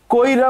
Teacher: ই এর উচ্চারণটা কিন্তু র এর পরে ক র তারপর ই কইরা বললে ই টা কিন্তু আগে চলে আসছে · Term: অভিশ্রুতি